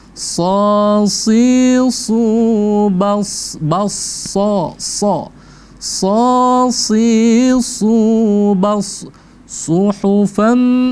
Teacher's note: Jadi sad itu selalu tebal, ya. Dia selalu tebal. Mau dia fathah, kasroh ataupun dhammah.